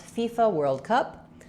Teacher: World Cup, we stress on cup, which means that world has to go by a little bit more quickly.